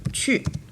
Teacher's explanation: So this is the falling tone on yu.